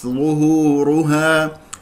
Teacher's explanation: الظاء مفخم مرتبه الثالثه لانها مضمومه ونظم الشفتين فيها